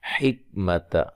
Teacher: کاف کو ہلا کے نہیں پڑھنا، ٹھیک ہے؟ کاف کو باریک پڑھنا ہے۔